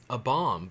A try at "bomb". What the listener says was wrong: You just pronounced the B at the end of it and caught me off guard.